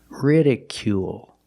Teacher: It's not ridicule or ridicule, it's ridicule. Make the long oo sound plus the dark L at the end of the word. Ridicule. Ridicule is a verb.